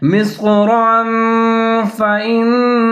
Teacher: را کے اوپر دو زبر یعنی کہ تنوین ہے، اس کے بعد حروف اخفا میں سے فار ہے فإنا، تو یہاں پر را کے اوپر اخفا کریں گے یعنی کہ آواز کو تھوڑا سا ناک میں چھپائیں گے